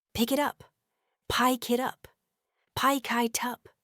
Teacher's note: The K sound at the end of pick links seamlessly with the I sound at the beginning of it, causing it to sound much more like pie kit. And then the T sound at the end of it conveniently links with the U sound at the beginning of up, making it sound like it up.